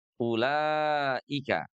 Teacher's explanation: ada bacaan panjang bertemu dengan hamzah pada kalimat yang sama ya